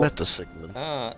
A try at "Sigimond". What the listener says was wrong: No, not Sigmund. Sigimond. It's very enunciated. It's not how he said it. He said it Sigimond. Very distinctly three sounds.